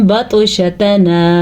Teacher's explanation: और त्वा पे कलकला हो रहा है